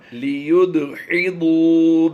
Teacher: دال اور ضاد کی آواز میں فرق ہونا ضروری ہوتا ہے. لیُد، دال پر ہم نے کلکلا کرنا ہے اور ضاد پر کلکلا نہیں کرنا